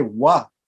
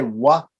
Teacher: So when you say wa, you can say without the teeth, only with the lips.